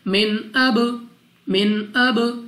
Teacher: با ہمارے پاس قلقلہ میں سے ہے تو جب ہم ادا کریں گے ہماری آواز ہمیں واپس سنائی دے گی